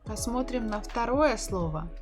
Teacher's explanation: the stress is on the final syllable